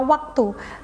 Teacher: bunyi W dalam kata waktu memiliki titik artikulasi yang melibatkan bibir yang sedikit membulat mirip dengan vokal u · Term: semivokal